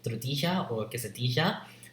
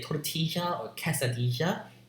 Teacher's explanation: in Spanish you use unaspirated voiceless stops